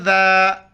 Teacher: ذال کے وقت زبان باہر نکالنا ہے